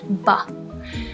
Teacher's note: the vocal fold vibration starts almost immediately for the sound ba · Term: voice onset time